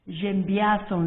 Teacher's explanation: the e is removed and are possibly put in its place the s is actually pronounced and it's pronounced like a zed